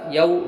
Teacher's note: واولین ہوا نرم آواز ساتھ جلد ادا کریں گے